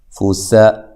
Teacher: سین کو باریک سیٹی سے ادا کرنا ہے